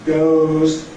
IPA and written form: gəʊz (goes)